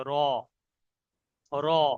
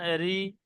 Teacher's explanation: মুখটা একটু গোল হবে, আওয়াজটা একটু মোটা হবে। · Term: পুর